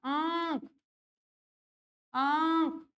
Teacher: मुँह से हवा निकलेगी, नाक से भी निकलेगी।